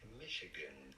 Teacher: To stress on the first syllable.